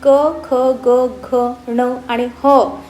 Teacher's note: ही व्यंजने आहेत ही कंठातून निघतात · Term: कंठवर्ण